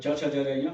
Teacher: there is a very fine difference between the affricate and stop. I mean in the manner of the release of the air when you pronounce it.